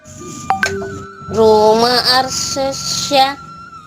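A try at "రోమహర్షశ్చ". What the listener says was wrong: ఆ కాదు ఆ కాదు ఆ కాదు ముందు హరి అనండి హరి హరి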